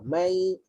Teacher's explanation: Apabila kita sebut huruf nun tapi mulut kita dekat makhraj huruf selepas dia dan bunyi nun ni hilang. Tak ada dah bunyi nun. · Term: idgham